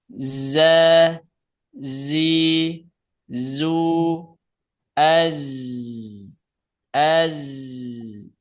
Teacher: Si ee zai itu yang mengalir adalah suara bukan nafas. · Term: huruf zai